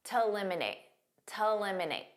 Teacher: Now, here a lot of native speakers will pronounce to when it's a preposition or part of the infinitive like it is here as a very unstressed t